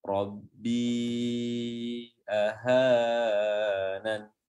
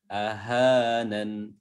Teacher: Ya, padahal huruf H di sini ahanan itu mas tabi'i. Panjangnya hanya 2 harokat. Ya, tidak boleh lebih.